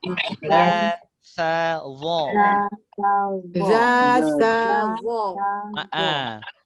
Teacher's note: Sama-sama dari ujung lidah berjumpa dengan gigi kacip atas. Ujung gigi.